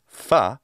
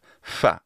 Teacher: It almost certainly is not a true labiodental fa, but a bilabial fricative fa